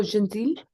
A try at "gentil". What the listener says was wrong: Donc, le T, on ne prononce pas le T. Le L, pardon. So, pretend that the L doesn't exist.